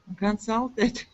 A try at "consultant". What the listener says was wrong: I can't really hear the ending. Consultant. It is spelled consultant, but it is pronounced consultant. Consultant. Consultant.